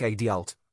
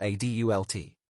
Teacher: Americans usually stress the first syllable in adult, like adult, while in British English, it's often adult.